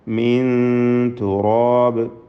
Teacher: നൂനിൻ്റെ പൂർണ്ണമായ ഇൽഹാർ സംഭവിക്കാതെ, നൂനിൻ്റെ മഖ്റജിൽ, അതായത് മേൽ മോണയിൽ നാവിൻ്റെ അറ്റം തട്ടിക്കാതെ അവ്യക്തമാക്കുക. അല്പം അകത്തി വെച്ചുകൊണ്ട്, അല്പം ഒന്ന് നാവിങ്ങനെ മോണയിൽ നിന്ന് വേർപെടുത്തിക്കൊണ്ട് അടുത്ത അക്ഷരത്തിൻ്റെ മഖ്റജിലേക്ക് ഉടനെ പോവുക. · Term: ഇഖ്ഫാ